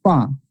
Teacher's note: ফা এর উচ্চারণ হচ্ছে pronounce from the এজ of the upper front teeth